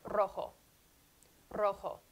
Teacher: double r now that would be a word like rojo rojo there's a trill involved and then the double r always with that trill wherever you find it in a word it's releasing a breath while allowing your lengua your tongue to